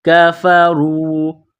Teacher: کاف کو باریک کرنا ہے، را کو واو کے ساتھ ملانا ہے، را کو موٹا کرنا ہے